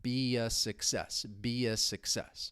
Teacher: And that is what allows us to link or connect these vowel sounds together. Be, so you hear a slight y sound between them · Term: intrusion